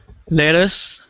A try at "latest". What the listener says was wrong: So just I'm hearing it sound like lettuce, just like the food. So I want it to sound like latest with that A sound. So there's a T at the end of that word. So the word I gave you there, lettuce, is not what I want you to say.